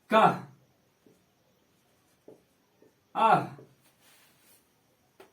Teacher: विसर्ग का उच्चारण में हकार की ध्वनि निकलती है, यानी वो हा के जैसा उच्चारण होता है।